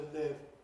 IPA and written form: lɪv (live)